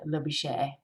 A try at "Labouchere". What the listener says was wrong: You did Labouchere like chair. It's actually